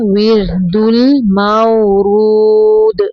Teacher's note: ہے، را کو باریک پڑھنا ہے، ورد المورود، دال کو ساکن کرتے ہوئے کلکلا کریں گے یعنی حرکت دیں گے